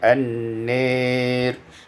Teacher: Pada ayat yang ke-29, an-nari imalatu fathatin nun wal alif, diimalahkan fathah nun dan alif, maka menjadi an-nir.